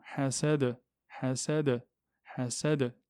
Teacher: le del, est une lettre de résonance, donc on doit la claquer